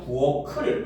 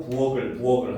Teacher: 부엌을도 키읔이 그대로 올라가지고 부엌을 이렇게 발음해야 돼요